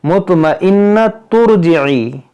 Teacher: ملا کر پڑھیں گے تو تا کو را سے ملا دیں گے، یہ الف نہیں پڑھیں گے